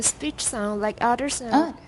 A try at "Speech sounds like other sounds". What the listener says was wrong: Don't go too fast. You missed an S there.